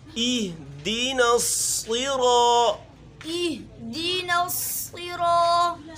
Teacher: نرمی سے، وَإِيَّاكَ نَسْتَعِينُ، نستعین، نستعین، اہدنا الصراط، اہدنا الصراط، سی نہیں صاد، اہدنا الصراط، اہدنا الصراط، نصراط، نصراط، یہاں حمزہ ہے مضبوطی سے، آگے پھر ہا ہے، چونکہ حمزہ اور ہا کا مخرج ایک ہی ہے، ایک ہی جگہ سے یہ دونوں حروف ادا ہوں گے